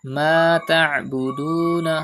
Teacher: pronounce ain from the middle part of your throat.